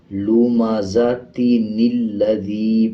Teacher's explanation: اب جیسے یہ لام کے اوپر شد ہے، شد کا مطلب ہے پچھلے کے ساتھ ملانا، تو اب یہ جو چھوٹا نون ہے اس کو لام کے ساتھ ملا کے پڑھا جائے گا